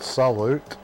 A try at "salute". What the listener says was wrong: Oh, you don't pronounce the T, motherfucker.